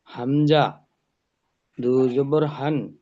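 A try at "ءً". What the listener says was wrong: না, হান নয়, হামজা জবর আ হয়, সি হিসেবে হামজা দো জবর আন।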